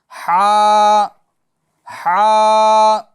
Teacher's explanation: इसको दरमियान हलक से अदा करना है।